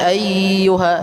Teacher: Ayyuha cukup ditekan, tidak perlu ditahan.